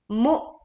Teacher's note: Nah, ini mu ada hamzah sukun, maka pita suara kita tertutup. Maka aliran suara dan angin pun terhenti